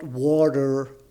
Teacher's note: just not pronouncing the 'T' which we would do in in British English